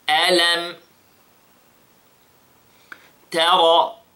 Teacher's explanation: Ta is light and ra is heavy.